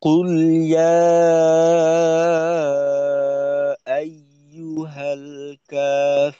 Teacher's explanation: قل يا أيها الكافرون কুটা শক্তিশালী ভাবে, তারপর ইয়া, এখানে তিন আলিফ টান হবে। আর শেষে গিয়ে কা এক আলিফ, রুন, এখানে আবার তিন আলিফ।